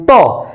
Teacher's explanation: একটু প্র্যাকটিক্যালি দেখেন যে জিহ্বাটা দাঁতের মাঝে আঘাত করে যেমন ত জিহ্বাটা উপরে দাঁতের মাঝখান বরাবর আঘাত করে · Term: দন্তীয় বর্ণ